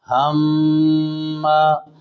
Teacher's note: یہ میم مشدد ہے، یہاں میم پر ایک الف غنہ کریں گے